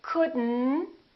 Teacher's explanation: we pronounce the d and then we connect the D next to the n and then the O disappears but the T also disappears